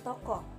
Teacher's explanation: Ciri-cirinya agak rendah, bulat, belakang.